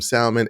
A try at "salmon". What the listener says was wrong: Did you just pronounce the L in salmon? That L is silent. We say salmonella, but we don't say salmon.